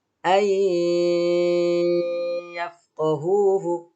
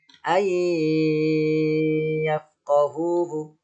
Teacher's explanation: Ditahan atau dilama-lamain selama 3 ketukan ya.